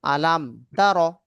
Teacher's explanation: মিম সাকিনকে বিনা গুন্নায় স্পষ্ট করে তাড়াতাড়ি পড়তে হবে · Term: ইজহারে শাফাবি